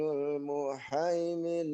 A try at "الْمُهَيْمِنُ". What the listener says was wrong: Oke, yang muhaiminul, Pak Dokter mohon izin hanya kurang besar, coba al-muhaiminul.